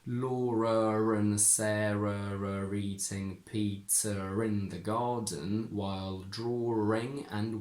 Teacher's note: you can decide to put a little extra r between all of these words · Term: intrusive R